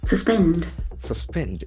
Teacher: We can see the accent falls on the second syllable.